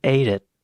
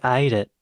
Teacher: the cultivated Australian English accent is usually produced with tighter vowel durations